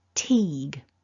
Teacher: we've got that t, an e, a long e sound. It's not a short I, it's an E, and then that g. So we need to be voicing the end of this syllable. · So we need to be voicing the end of this syllable. It starts off unvoiced with the t, but then we've got the E vowel always with vibration and a g